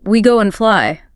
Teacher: the word and was reduced so heavily, it basically lost its vowel sound. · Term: reduction